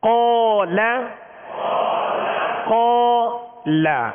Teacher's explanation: قاف کے ساتھ الف بھی پر ہو گیا، قاف کو بھی پر پڑھیں گے حروف مستعلیہ میں سے. جب لام پڑھیں گے تو لام کو باریک پڑھیں گے، یعنی قاف کی وجہ سے ہم لام کو پر نہیں کریں گے